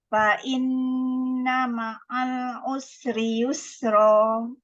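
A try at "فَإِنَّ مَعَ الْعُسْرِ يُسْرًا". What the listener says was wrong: Panjang sikit lam. Ma'al tu lebih lama sikit. Lam tu bainiyah. Lama sikit usri yusra. Lepaskan rakhawah dia.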